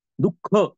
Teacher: हात आणून बघा लगेच कळून जाते विसर्गाचा अर्थ त्यातून काय होतो हवा बाहेर पडते तोंडातून त्याचा उच्चार ह सारखा होतो